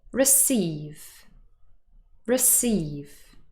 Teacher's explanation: this word is stressed on the second syllable